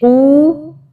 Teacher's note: قاف واو پیش قو، واو کی وجہ سے ہم اسے ذرا سے کھینچ کے بول رہے ہیں